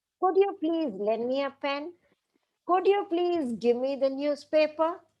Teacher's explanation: they all end with a slightly rising tone because there is a question but these are not actual questions as such it's not asking